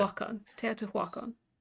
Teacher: the HU is usually just pronounced like a W, but other than that, yeah, pretty good.